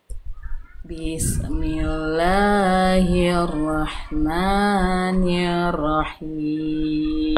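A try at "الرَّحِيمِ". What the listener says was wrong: Rohnya tetap ditasydidkan.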